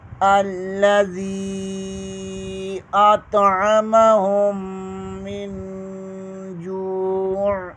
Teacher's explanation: آگے نون ساکن کے بعد جیم حروف اخفا میں سے آ رہا ہے، یہاں اخفا ہوگا۔ الذی اطعمہم من جوع، یہاں اگر وقف کریں گے تو جوع پڑھیں گے، اگر ملا کر پڑھیں گے تو جوعم پڑھیں گے۔